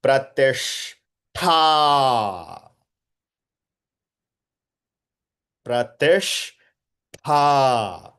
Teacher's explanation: Tha mahaprana followed by aki matra.